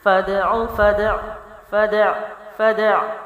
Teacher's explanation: یہ دال بھی باؤنس بھی ہوگا، عین بھی ادائیگی ہوگی